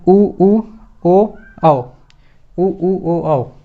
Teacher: जब चारों ध्वनियों का उच्चारण करते हैं तो हमारा जो मुख है वो वृत्त की तरह होता है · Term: वृत्तमुखी